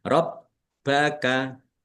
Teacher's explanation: Bnya ada tasdidnya dibaca dobel ditekan dan ditahan biar tampak dobelnya.